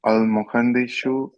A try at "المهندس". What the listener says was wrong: Not shu, because there's a difference between this one and this one. This one is a S sound, and this is like a sh. So this one, muhandisu. It's not muhandishu. That's wrong. There's a difference between two. Seen, right? It's this sound. There's no sh sound.